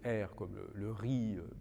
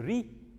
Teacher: vous pouvez le prononcer r comme le riz le r disons standard en français mais vous pouvez le prononcer rouler